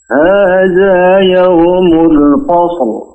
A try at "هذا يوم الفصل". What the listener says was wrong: Jangan fasl, tapi fa-nya dibuka. Fasl.